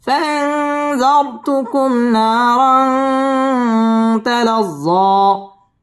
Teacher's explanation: নারাং তানবিনের বামে তা আসছে, তা ইকফার হরফ, এখানে গুন্নাহ করে পড়তে হবে। তালাজ্জ তাসদীদ ওয়ালা হরফ, জ মধ্যে তাবাই একালিফ টান দিয়ে ওয়াকফ করতে হবে।